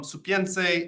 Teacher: In Ladino, you often see this as saver or suver with a V, but here it's become a P, it's devoiced.